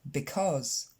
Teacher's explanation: L'accent tonique tombe sur la deuxième syllabe, cause, et le premier c'est pas un i comme vous avez tendance à le dire, because, mais c'est un e, because.